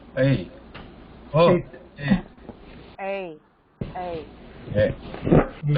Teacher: the tongue is starting in the relax position if you notice that and it is raising up but it happens quickly